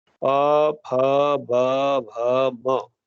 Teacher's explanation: जब भी आप इनको बोलेंगे तो दोनों ओठ चिपक जाते हैं। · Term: ओष्ठ वर्ण